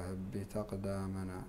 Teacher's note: والقاف هنا أيضا مقلقلة كما مثل لأنها أحد حروف القلقلة